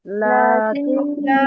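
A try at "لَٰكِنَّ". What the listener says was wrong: নুনে তো টান হবে না আপু। লাকিন্না। লাকিন্না।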